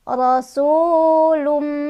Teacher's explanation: Su ada mad tabi'i karena ada dhammah bertemu dengan wawu sukun. Cara bacanya panjang 2 harokat.